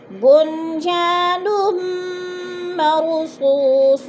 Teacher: نمر 2 پیش تنوین، آگے میم مشدد آ گیا ہے تو ادھر ادغام سختی سے جما کر پڑھیں گے۔ مر کی را پر پڑھی جائے گی، سو پہ وہ مدہ ہے، مرصوص وقف کی صورت میں صاد کو جزم دے کر پڑھیں گے.